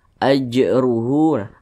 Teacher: huruf Jim huruf jimnya sukun dia perhatikan lagi di samping nah huruf Jim tadi sudah dijelaskan masuk kepada huruf Qalqalah jadi ketika dia sukun dipantulkan ajruhu masih tergolong kepada Qalqalah sugr karena dia di tengah kalimat